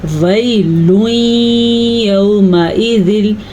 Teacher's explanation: یہاں پہ ادغام بالغنہ کا قاعدہ ہو رہا ہے تو یہاں پہ ہم غنہ کریں گے